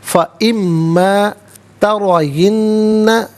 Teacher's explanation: را پر زبر ہے، را کو پر کر کے پڑھیں گے